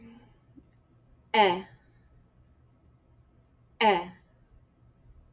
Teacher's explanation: with the aleph how we pronounce that is with a guttural stop